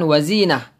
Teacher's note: Kalau mati huruf ta marbutoh ini menjadi ha sukun.